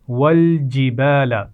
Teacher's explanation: جیم کے مخرج کو واضح کیجئے، زبان کے درمیان اور اوپر کے تالو کو ملانے سے ادا ہوتا ہے